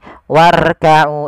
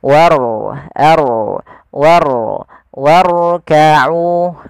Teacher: sini ada huruf ro yang ditandai dengan warna biru tebal menakan huruf rnya dibaca dengan ro tafkim yaitu ro yang tebal